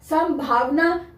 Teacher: संभावना यहां पर म की साउंड आ रही है लेकिन सम ही है क्योंकि यहां पे भा की वजह से यहां पे म की साउंड आ रही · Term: अनुस्वार